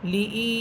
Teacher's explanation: লি ই, লাম হরফে কোনো টান হবে না, এখানে টান হবে হামসাতে। হামসা ইয়াসের ই, লি ই, লাম খারা সবর লা, খারা সবর খারাসের উল্টা পেশ হলে একালিফ টেনে পড়তে হয়।